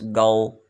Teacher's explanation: اخفاء، اخفا کہتے ہیں ناک میں آواز کو چھپانا، جس طرح ہم لفظ بولتے ہیں اردو میں ہمارے بولا جاتا ہے لفظ گاؤں، گاؤں میں نون پورا نہیں پڑھا جاتا، آدھا پڑھا جاتا، نون غنہ پڑھا جاتا ہے